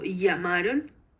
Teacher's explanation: a las dos nos parecía que sonaba como una fricativa palatal sonora, como llamaron, pero también nos parece que se asemeja su pronunciación a una I deslizada debido a que se encuentra al lado de la vocal A y pues que esta vocal es átono.